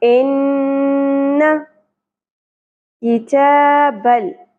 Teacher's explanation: زبر زیر پیش کو مختصراً پڑھا جاتا ہے، شارٹ پڑھا جاتا ہے۔ ان کتابل، کاف باریک ہوگا، زیر کو زیادہ نہیں کھینچنا، تا کے اوپر کھڑی زبر ہے۔